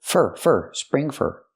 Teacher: for is not stressed so you pronounce it fur